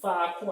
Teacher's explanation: Penúltima sílaba mais forte, termina em um ditongo crescente.